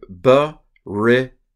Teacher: the accent typically goes on the second to last syllable when you have a possessive.